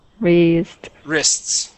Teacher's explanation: we say it so quick. It almost sounds like we skip over that T and say risks. But the Yeah, the T is there.